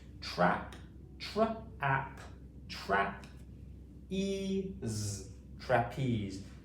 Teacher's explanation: We're saying the T and R quite quickly together. We're blending them together. They are adjacent consonants.